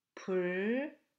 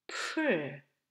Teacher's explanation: plain plosive soft without any puff of air